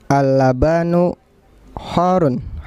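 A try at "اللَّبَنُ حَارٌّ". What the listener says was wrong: pendek semua. Al-labanu, tidak ada yang panjang.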